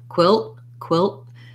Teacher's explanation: if we do a stopped t there we just go really short on the l and cut off the air to mark that t sound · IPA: kwɪlt˺